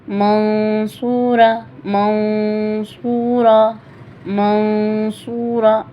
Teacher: سوا کا مخرج بھی ادا کرنا ہے، نون کو چھپانا بھی ہے